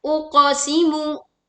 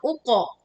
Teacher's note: pantulkan qaf sukun dengan suara yang jelas dan pantulannya dengan suara yang tebal. Bukan dimiringkan menjadi uqe.